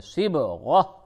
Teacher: صب با پہ قلقلہ کریں